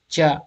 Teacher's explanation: अघोष तालब्य अल्प प्राण है।